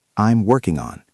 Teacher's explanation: Listen to the reduction. I am becomes I'm.